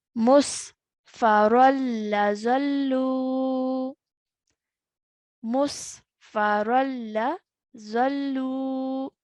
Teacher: Okay, even though there's a tanween written there, but as we recite it, we are going to recite it like this, where one of the tanween is removed, so it's straight away joining the ra to the lam mushaddad. No nasal sound is made when we see a tanween followed by a lam mushaddad. · I am to make no nasal sound as I join the ra to the lam. Okay, even though there's a tanween written there, but as we recite it, we are going to recite it like this, where one of the tanween is removed, so it's straight away joining the ra to the lam mushaddad.